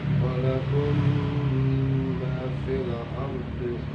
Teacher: Mim sukunnya diidghamkan, dimasukkan ke dalam huruf mim yang ada di hadapannya dan digunakan atau ditahan 1 alif 2 harakat. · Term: idgham mimi